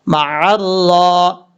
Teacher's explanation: عین، را زبر عر، را کھڑا زبر را، مع الرا، را سے پہلے لام ہے پھر حمزہ ہے، ان دونوں حرف کو چھوڑ دیں گے، را کے اوپر کھڑا زبر ہے، پر پڑھا جائے گا اور لمبا بھی کیا جائے گا 1 الف کی مقدار